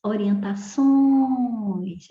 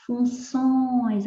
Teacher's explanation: é a última sílaba que é tônica.